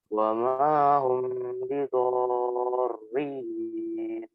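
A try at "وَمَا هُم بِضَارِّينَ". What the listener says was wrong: Oke, tadi yang pertama udah benar, hum ditahan, cuma yang kedua humnya kurang ditahan ya.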